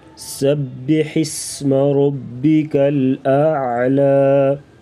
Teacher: سین سیٹی جیسی آواز نکالیں گے، ہا گلے سے